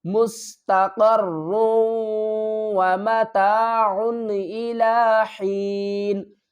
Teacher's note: ملائیں گے اور کیا کریں گے، ادغام کریں گے، یعنی کہ را کو واو کے ساتھ مدغم کریں گے، ایک حرف کو دوسرے حرف میں ملا دیں گے